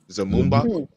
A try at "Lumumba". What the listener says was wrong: With an L.